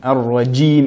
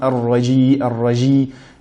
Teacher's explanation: Premièrement, dans Al-Basmala, A'udhu billahi minash shaitanir rajim, on a tendance à prononcer la lettre Jim d'une manière assez légère, Ar-Rajim. Mais il faut veiller à ce que la lettre Jim soit prononcée avec une coupure du son. Ar-Rajim et non Ar-Raji, Ar-Raji, Ar-Rajim.